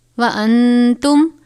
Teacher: نون ساکن کے بعد حرف اخفا میں سے تا ہے، غنہ کریں گے